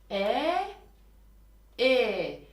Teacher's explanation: E daha arkadan geliyor ses daha gırtlaktan geliyor daha Tok geliyor